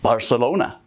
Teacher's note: northern Spaniards pronounce Z's and C's as a th sound. We actually only do it when the C comes before an I or an E, like in Barcelona.